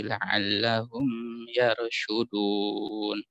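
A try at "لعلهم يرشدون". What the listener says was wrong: Mimnya jangan terlalu tahan. La'allahum yar.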